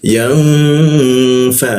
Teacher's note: Didengungkan. Kita tahan dua ketukan didengungnya